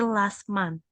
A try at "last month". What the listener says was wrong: Last month, ada TH-nya.